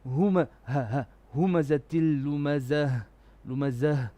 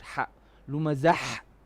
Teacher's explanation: when you end on a ta marbuta, it becomes a bottom throat ha. It should not sound like the middle throat ha.